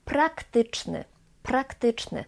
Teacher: In the beginning we have voiceless p, p, and sonorant r, but the p doesn't become voiced, doesn't become b. No, it's simply the same way.